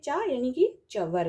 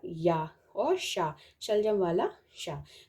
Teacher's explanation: तो ये जो तीनों वर्ण हैं इनका जो उच्चारण स्थान है तालु